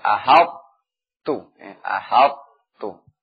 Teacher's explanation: Ha-nya ini pada huruf ha ditarqiq kemudian ta-nya tetap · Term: idgham naqis